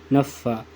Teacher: فا جو ہوتا ہے اوپر والے دانت ہیں نا، نیچے والے ہونٹوں کے ساتھ لگتے ہیں